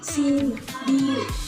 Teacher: Yang kedua itu I, seperti pada kata sini. Posisi lidahnya itu berada di bagian depan dan cukup tinggi di dalam mulut. Bentuk bibirnya sedikit tersenyum.